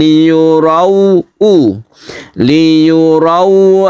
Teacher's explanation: sifat lain ini sukun wau bertemu dengan ee sebelumnya ada fathah itu suaranya menuju u bukan O